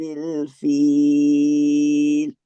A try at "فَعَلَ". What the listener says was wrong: فعل فعل فعالا نہیں کریں گے. ٹھیک ہے. وہ پھر ہماری ایک 2 کاؤنٹ کی مد بن جاتی ہے.